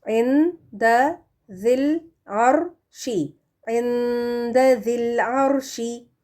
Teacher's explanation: حروف حلقی میں سے کوئی حرف نہیں تو یہاں پر غنہ دینا ہے نون ساکن کا · را ساکن سے پہلے زبر ہے نا، تو یہ ہیوی ہے، پڑھا جائے گا، موٹا پڑھا جائے گا، موٹا ادا کریں اس کو. · پھر آگے ہے ذی جو کہ مد لیٹر ہے، اور اس کے بعد ال جو لام تعریف العرش کے ساتھ ہے، تو یہاں پر ہم مد لیٹر کو بھی گرا دیں گے اور لام تعریف والے الف کو بھی گرا کر اس کو ملا کر پڑھنا ہے